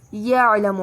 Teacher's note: دونوں عین وسط حلق سے ادا ہوں گے · یعلم عین وسط حلق سے ادا ہوگا